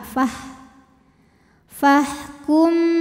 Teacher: jadi Fa ini jangan sampai dipanjangin dulu pendekin langsung ke ha